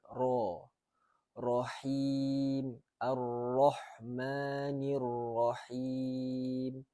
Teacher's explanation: Ra tu bila balik baris atas mesti dibaca dengan tebal. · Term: huruf ra